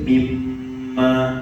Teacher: Kita masukkan idgham, maksudnya masukkan bunyi nun mati ke dalam bunyi mim. Sebab itulah kita baca mimma. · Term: idgham ma'al gunnah